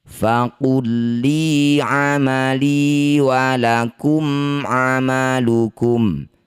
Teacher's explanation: Lam sukun bertemu lam, dua huruf yang sama persis bertemu disebut bacaan namanya idgham mutamatsilain. Bunyi lam pertama masukkan pada lam kedua tidak usah dengung.